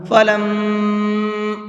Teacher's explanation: یہ جو میں ناک میں آواز روک رہا ہوں یہ غنہ ہے